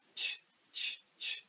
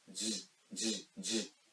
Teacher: for ja you need to give pressure or tension in your throat or vocal cords to vibrate it.